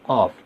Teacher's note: قاف جو ہے زبان کی جڑ کی ابتدا اور اس کے مقابل اوپر کے تالو سے ادا ہوتا ہے۔ زبان کی جڑ کی ابتدا یعنی زبان جہاں سے شروع ہو رہی ہے وہاں سے قاف ادا ہوتا ہے۔